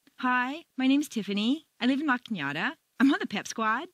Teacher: A certain segment of the population uses rising staircases, generally teenagers on their way to the shopping mall.